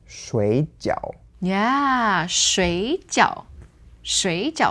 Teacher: So 水 normally third tone, for water becomes second tone, third tone.